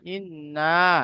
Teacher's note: দেখেন, হামজা নুন জের ইন, নুন আলিফ জাবার না, ইন্না। নুনের উপরে তাজদিদ এসেছে, তো নুন মুসাদ্দাদ গুন্না ওয়াজিব হবে।